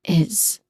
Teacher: the word is here is pronounced with a buzzing sound at the end. Okay, a voiced buzzing sound at the end.